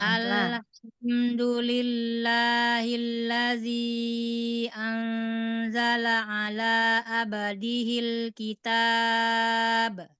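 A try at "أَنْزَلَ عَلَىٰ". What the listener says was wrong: Anzala ala. Bukan ala. Ayo, ketukar ain sama hamzah. Anzala ala.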